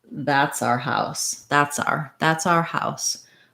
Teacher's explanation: So rather than our house, we're often going to reduce the our to just are. So it'll sound like that's our house rather than our house.